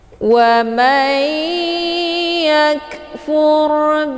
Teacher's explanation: nun sukun dimasukkan ke dalam huruf ya dengan cara ditekan dan ditahan lebih kurang 2 harokat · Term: idgham ma'al gunnah